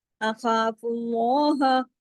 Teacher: اخوا میں خواہ موٹا، اللہ میں لام ہیوی